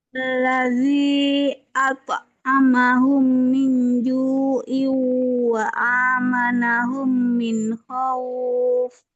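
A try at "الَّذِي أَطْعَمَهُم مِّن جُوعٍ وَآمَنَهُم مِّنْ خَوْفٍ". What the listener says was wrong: Lagi, ini idghamnya kurang panjang. Terus yang di sini juga ju'ayu wa amanahum masih kurang.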